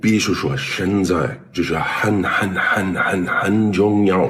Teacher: But his tones, well, instead of using the right Mandarin tones, he follows an English pitch pattern.